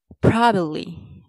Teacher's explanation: Don't stress the second part, bab.